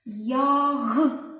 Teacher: останній звук у цьому слові звучить довго протяжно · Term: голосний звук